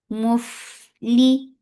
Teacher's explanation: On fa, you are giving rakhawa and hums. Mufli. Focus to give E sound.